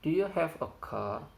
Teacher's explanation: in this falling intonation it expects yes as the answer